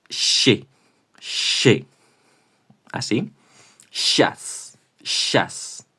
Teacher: Es parecido, es un poco más blando que el she del inglés de decir ella she, porque aquí tenéis que tener la boca completamente sonriente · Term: shch